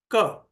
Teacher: तो जब भी क उच्चारित हुआ उससे थोड़ा पहले वहां पर गौर कीजिए, तो जिह्वा ऊपर उठती है और कहीं तो भी स्पर्श करती है, वो कंठ में ऊपर स्पर्श करती है। जिह्वा का जो बिल्कुल पिछला हिस्सा है वो ऊपर उठकर कंठ के वहां चिपकता है।